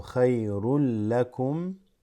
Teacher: Khayrun, but you have a lam with the shadda, so khayrul lakum.